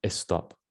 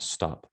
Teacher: they say estop instead of just stop it's because that e has to be there for the rules of spanish